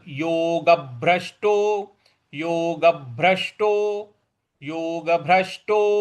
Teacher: ग के बाद जो भ है उस पर हमको बल देना है।